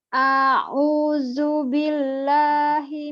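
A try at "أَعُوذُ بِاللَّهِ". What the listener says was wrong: Kemudian yang huruf yang ketiganya bukan zu, bukan a'uzu, tapi zu, zal. Hurufnya zal yang ada titik satu ya. Makhrajnya nanti setelah kita pelajari ujung lidahnya ada di ujung gigi seri atas sama dengan huruf fa tadi yang kita baca.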